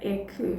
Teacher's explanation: the é certainly is an open vowel. It has the accent there